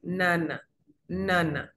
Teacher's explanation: Nasal alveolar es la que el ápice de la lengua reposa en los alveolos.